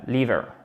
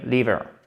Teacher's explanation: Brain et liver, accent tonique sur la première syllabe, liver, le foie, ok?